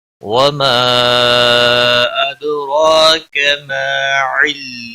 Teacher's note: دال ساکن پر قلقلہ ہوگا